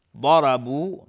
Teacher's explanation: ضاد از حروف استعلاء غلیظ صرف میشه، را هم حکمش استعلاء است